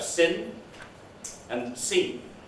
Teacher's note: in english you have two vowels in the close front area